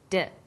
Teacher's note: When you articulate d, you can feel your tongue against your tooth ridge, like this, d.